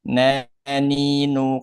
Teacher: Kalau nun di ujung lidah memang keluarnya dari ujung lidah bertemu dengan gusi gigi seri atas di bawah makhraj huruf lam. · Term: huruf nun